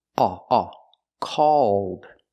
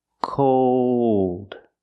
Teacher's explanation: The first word is the aw sound. Aw, aw. Called. And the second word is the O sound plus the dark L.